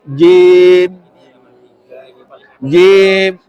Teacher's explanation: jangan Jim tapi tekuk lidahnya ke langit-langit